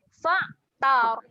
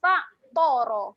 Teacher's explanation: huruf ta adalah huruf yang nipis. Huruf ra baru tebal lah keadaan dia kat sini.